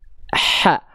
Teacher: H kecil dilafalkan dari bagian tengah tenggorokan kita, teman-teman sekalian. Ya, dia mengalirkan dengan aliran nafas yang karakternya berbisik. H, lembut.